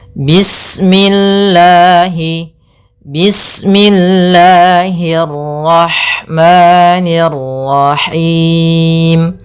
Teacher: Panjangnya lafal Allah yaitu dua harakat. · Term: mad thbi'i